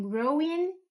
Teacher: O final, tudo que terminar com ING é outra regra para você dormir em paz hoje. Não tem, 100% das vezes não tem som nesse G, sempre terminando nesse N e a gente sempre fecha esse N